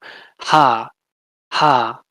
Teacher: the glottal fricatives, so that's just a puff of air from your glottis